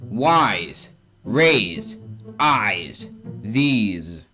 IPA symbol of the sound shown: z